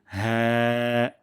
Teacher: হলক বা কন্ঠনালীর শুরুর ভাগ বা বুকের দিক থেকে শুরুর অংশ। বুকের দিকের যে শুরুর অংশটা এখান থেকে উচ্চারণ হবে।